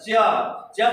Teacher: इनके उच्चारण में स्पर्श तो होता है खास करके संघर्षण भी होता है मतलब रगड़ के साथ निकलता है च च बोलेंगे तो रगड़ के साथ भी यह वर्ण जो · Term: स्पर्श संघर्षी व्यंजन